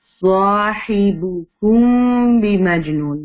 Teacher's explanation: میم ساکن کے بعد با آ جائے تو آپ کو میم ساکن کو چھپا کر پڑھنا ہوتا ہے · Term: اخفاء شفوی